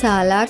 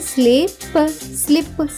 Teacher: తరువాత పదం చూద్దాం, పదం ఎస్ఎల్ఐపి. ఎస్ఎల్ యొక్క శబ్దం సాలా కాకుండా స్లా అవుతుంది. కాబట్టి ఎస్ఎల్ఐ యొక్క శబ్దం అవుతుంది స్లీ.